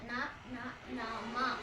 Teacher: ಎ ಐ ಓ ಓ ಔ ಹಂಗಾದ್ರೆ ಕನ್ನಡದಲ್ಲಿ ಅನುನಾಸಿಕ ಅಕ್ಷರಗಳು ಎಷ್ಟು ಐದು ಅನುನಾಸಿಕ ಅಂದ್ರೆ ಮೂಗಿನ ಸಹಾಯದಿಂದ ಹೇಳ್ತಕ್ಕಂತದ್ದು